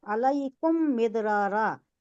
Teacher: तो इस वास्ते होठों को चूंकि शफतैन कहा जाता है, तो इदगाम में शफवी 2 होंठ मिलाकर जो इदगाम हो रहा है, दोनों को मिला रही। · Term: इदगाम है शफवी